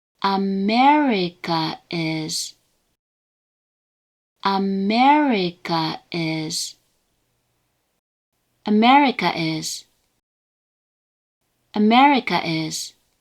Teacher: one with the downstep on the second mora